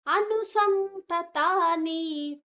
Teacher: ಅನುಸ್ವರದ ಉಚ್ಚಾರಣೆ ನ, ಮುಂದಿನ ಅಕ್ಷರ ತಾ ಇದೆ,